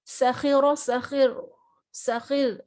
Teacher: اب ہم نے را کو ساکن کرا جب وقف کرتے ٹائم تو را سے پہلے زیر آ گئی، تب پھر یہ را باریک پڑھا جائے گا